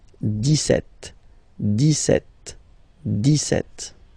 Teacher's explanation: you don't insist on the S